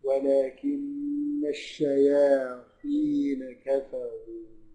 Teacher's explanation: برضه الراء مضمومة مفخمة